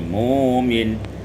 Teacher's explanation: Pada ayat 124 mukmin ibdalul hamzati wawan ditukar hamzah waw menjadi mumin